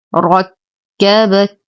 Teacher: نشد الكاف الأولى ونهمس الثانية